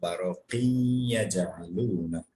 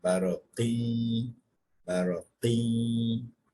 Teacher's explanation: We're assimilating the sound of Tanween into Ya. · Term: Idgham Bagunna